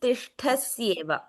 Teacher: I didn't hear the sh in tishtasyeva. I heard a slight s there.